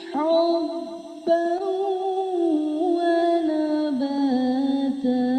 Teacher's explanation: حبن میں پھر سے تنوین آ گئی اور تنوین کے بعد واو ہے، یعنی یہاں پر ادغام ہو رہا ہے